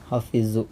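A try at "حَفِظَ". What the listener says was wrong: Hafidho. Hafidho ya, fathah. Kalau fi'il madhi itu pasti fathah. Hafidho, bukan hafidhu. Hafidho.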